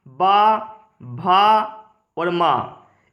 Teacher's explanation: जो माँ है वह ओष्ठय है और साथ साथ वह नासिक भी है